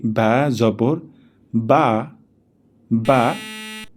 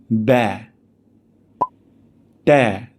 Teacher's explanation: তারপর বা জবর বা যদি আমরা উচ্চারণটা করি বা জবর বা তাহলে এটা এরাবিক টোন হবে না। আরবরা যখন জবরের সাউন্ড করে তখন একটু ফ্ল্যাটেন সাউন্ড করে।